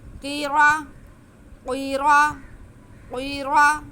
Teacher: فقلنا لهم كونوا، فقلنا لهم كونوا قردة، قاف حروف مستعلیہ، اس کے نیچے زیر، آگے را پہ زبر، تو را پہ زبر ہے اس لیے را موٹا پڑھا جائے گا